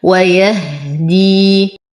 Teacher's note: نصبر على الهاء فهي ساكنة نتم كسرة الدال وبعدها يا ساكنة فهو مد طبيعي حركتين.